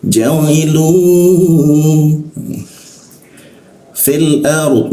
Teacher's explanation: Inni ja'iluna nun bertemu fa. Ketika nun bertemu fa itu didengungkan, ditahan 2 ketukan.